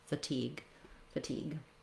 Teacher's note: a quick light touch reduced vowel for fatigue